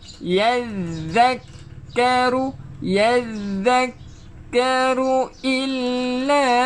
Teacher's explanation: ma, panjangkan 2 harakat. Tekankan dekat zal. Sambil-sambil tu kita keluarkan hujung lidah melalui gigi gunting kita.